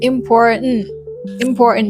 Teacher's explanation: You're just engulfing the T sound. Pronouncing these words with the T sound is correct, but to sound more natural, you just have to engulf the T sound.